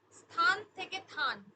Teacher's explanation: ব্যঞ্জন লোভ যেমন স্থান দন্তে স এ থ এ উঠে গিয়ে দন্তের স উঠে গিয়ে থান হয়ে গেছে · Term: আদিতে ব্যঞ্জন লোভ